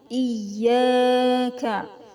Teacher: Iya itu ada tasdidnya harus ditekan ya, harus ditahan.